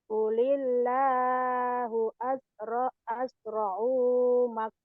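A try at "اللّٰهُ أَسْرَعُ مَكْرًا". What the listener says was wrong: pendek O-nya. Qulillahu asra'u makra. Asra'u asra'u.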